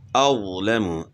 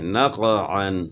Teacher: قاف حروف قلقلہ میں سے ہے، تو اس کو ہلا کر پڑھنا ہے، یعنی قلقلہ کرنا ہے